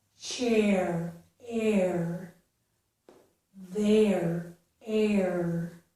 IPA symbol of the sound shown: eəɹ